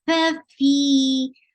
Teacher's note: Fi 2 counts long and hums before it.